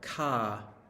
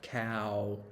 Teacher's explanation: it's one ah but cow has two vowels joined together so that's a diphthong